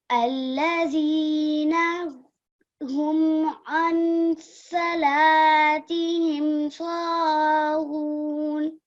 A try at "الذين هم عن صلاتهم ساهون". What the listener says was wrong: Very good. Well done. Jazakumullah.